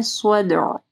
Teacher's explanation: ذات الصدع، صاد کو ہیوی پڑھنا ہے، صدع دال کے اوپر کلکلا ہوگا اور عین کو واضح پڑھنا ہے۔